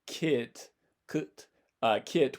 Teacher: And that, so instead of saying like kit, kit, where your tongue is still going to be fairly far forward for that I vowel right after it